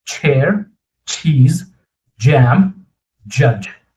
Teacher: Now think of this as a stop sound and fricative combined, right? You hold the air but release it with a friction.